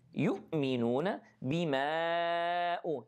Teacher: So والذين يؤمنون, the ضمة fully, يؤمنون بما, here we have mad 4 seconds, and this mad called مد منفصل